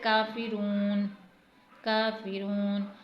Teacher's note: کا کو ہم نے تھوڑا سا کھینچا ہے، فا کو نہیں کھینچا اور را کو بھی تھوڑا سا کھینچا ہے